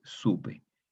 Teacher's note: La P es consonante labial, entonces labializa la O y la hace más labial. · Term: fenómeno de asimilación